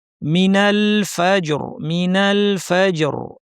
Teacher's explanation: এক্ষেত্রে দেখতে হবে এর পূর্বের হরফে হরকত কি আছে, জবর, কাজেই রটা ভারী হবে, জিমে কলকলা করে র ভারী করে থামতে হবে।